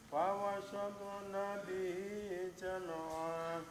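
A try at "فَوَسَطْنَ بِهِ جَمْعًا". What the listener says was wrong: Masih terdengar fawasat ngaten nggih. Fawasat sa. Sasi sa. Fawasat satpo. Masih terdengar poknya ini seperti huruf ta ngaten nggih. Fawasatpo. Satpo. Satpo. Satpo. Fawasatpo. Jam nggih.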